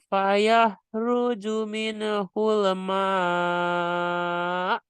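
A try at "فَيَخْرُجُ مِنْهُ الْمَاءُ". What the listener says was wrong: Minnya jangan mantul. Fayakhruju minhul ma'.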